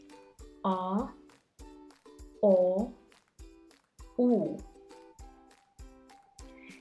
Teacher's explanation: the tongue is positioned towards the back of the mouth as you say it. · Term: back vowels